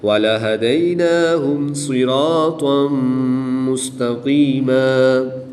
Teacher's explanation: دو زبر کی تنوین کے بعد میم حروف یرملون میں سے ہے تو یہاں پر ادغام مع الغنہ ہوگا، غنہ کر کے پڑھیں گے۔ دو زبر کی تنوین کو وقف کی حالت میں الف مدہ سے تبدیل کر کے پڑھیں گے۔